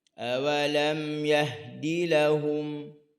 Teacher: Jangan baca terlalu panjang huruf ha.